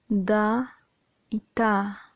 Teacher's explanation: Mediante el ápice o la punta de la lengua va a rozar los incisivos superiores, produciendo da y ta. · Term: Dentales